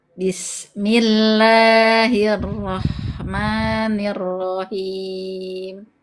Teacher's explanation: Bismillahirrahmanirrahim. Baik, nanti pangkal lidah naik ya Bunda. Huruf-hurufnya dia tafkhim.